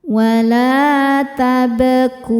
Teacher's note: Karena ba sukunnya sukun asli dan ada tengah di tengah-tengah bacaannya. Maka ba ini dipantulkan dengan pantulan yang kecil. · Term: qalqalah sugra